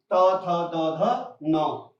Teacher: इनका स्थान क्या है, दंत माने दांत, क्योंकि इनको बोलते समय जब उच्चारण करेंगे तो हमारे जीभ क्या करेंगे, दांतों को स्पर्श करेंगे